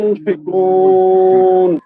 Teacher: এখানে একফার গুনাটা একটু বেশি করতে হবে